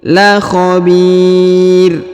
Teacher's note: Huruf bi ya dipanjangkan boleh 2, boleh 4, boleh 6 karena di depannya terdapat ya sukun atau ya mati sebelum huruf pemberhentian, dan huruf pemberhentian huruf ra atau run disukunkan atau dimatikan ya.